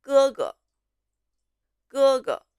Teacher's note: 第 一 个 哥 字 是 一 声 and the second character 哥 has the light tone. 第 二 个 字 是 轻 声， 哥 哥。